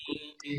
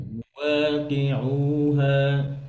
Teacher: মুয়াকি যখন কফে কাসরা হয় তখন কফ মোটা হবে না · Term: পাতলা